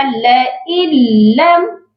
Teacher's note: ان نون کی آواز کو بالکل نہیں لانا، نون کی آواز کو بالکل ختم کرنا ہے، نون کو نہیں پڑھنا۔ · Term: ادغام